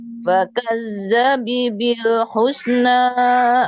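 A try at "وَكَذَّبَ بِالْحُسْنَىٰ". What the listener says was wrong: mas patah apa kasro kazaba apa kazabi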